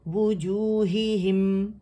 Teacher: میم سکون کے ساتھ ہم، دونوں ہونٹ اکٹھے ہو گئے، مل گئے آپس میں، ٹھیک ہے، سکون ہے نا، تو آواز جو ہے وہ اس میں توسط شو کریں گے، وہ چلے گی آواز.